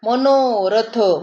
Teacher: विसर्गाच्या मागे अ हा स्वर असून पुढे मृदू व्यंजन आल्यास विसर्गाचा उ होतो व तो मागील अ मध्ये मिळून त्याचा ओ होतो